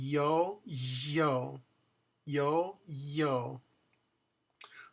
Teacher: A little friction, little Y. Again, put your tongue in the position of Y. Yo, yo. But tighten it up a little bit so that there's a little friction · Yo yo yo yo. So it's actually as high as your tongue can go and making the Y sound without closing it completely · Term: double L